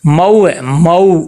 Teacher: جب ہم ہونٹ گول کریں گے مو تو یہ معروف ادا ہوگا